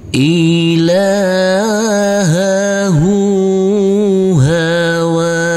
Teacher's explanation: huruf ha kita baca panjang juga dengan panjang dua harakat